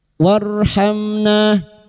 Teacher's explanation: Lana warhamna warhamna. Ra sukun yang didahului fathah kita baca tafkim.